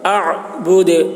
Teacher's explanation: دال میں قلقلہ ہوگا. اعبد، آواز ٹکرائے گی.